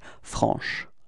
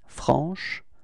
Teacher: So I insist a little bit on the sh at the end